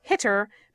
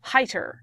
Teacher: we don't double the final consonant very often that means that the final vowel in the word suddenly becomes long and it sounds really strange